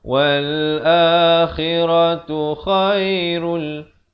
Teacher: Idgham di sini idgham bila gunnah, masuk tanpa dengung. Asalnya khairun jadi khairul.